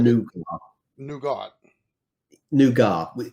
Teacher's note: So you don't really pronounce the T. Yeah, and there's no T on it.